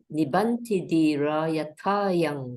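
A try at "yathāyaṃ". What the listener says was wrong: Yathaya. Whenever you see this long A, this upper bar, you have to lengthen. You have to actually lengthen, not shorten.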